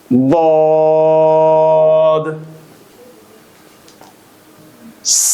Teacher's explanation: জিহ্বার গোড়ার কিনারা মারি দাঁতের গোড়ার সঙ্গে লাগিয়ে উচ্চারিত হয়। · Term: দদ